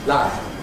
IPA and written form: lav (love)